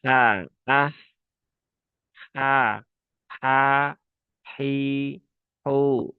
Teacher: Satu tempat keluar yang sama dengan huruf Ain. Nah, dia lembut ya. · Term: huruf H